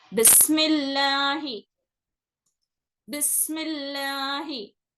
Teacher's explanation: तो जेर आने की वजह से इसको बारीक पढ़ना रहता है।